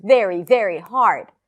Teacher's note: 'HARD' is more stressed than the 'VERY' and the 'VERY', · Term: stressed words